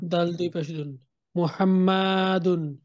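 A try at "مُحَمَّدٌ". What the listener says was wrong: মাতে কেন টান হলো? মাতে কি আসলেই টান আছে? কোথাও টান নাই।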